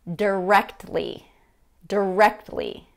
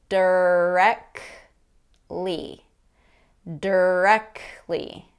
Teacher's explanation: over these four american english words the first word is directly directly that t in there has been dropped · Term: reduced t